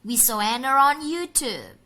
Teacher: Jadi setelah Anna ada R baru on. Jadi Enron.